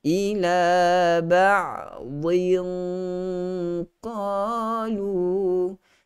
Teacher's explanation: huruf ain yang mati ada sifat tawassut. Pastikan kita tidak berlebihan untuk melepaskan suara dan juga tidak berlebihan untuk menyekat suara gitu. Bainiyah antara kedua-duanya.